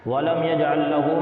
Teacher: وَلَمْ يَجْعَلْ لَهُ عِوَجًا، دیکھیے وَلَمْ يَجْعَلْ لَهُ میں ہا الٹا پیش ہو ہے یعنی ہا پر الٹا پیش ہے تو اس کو بھی تھوڑا کھینچ کر پڑھیں گے